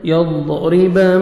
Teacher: را کو نیچے زیر ہے، را کو ہم نے باریک پڑھنا ہے